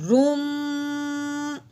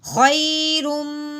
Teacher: منہ بند کر کے ناک میں سے جو آواز نکلی ہے یہ غنہ ہے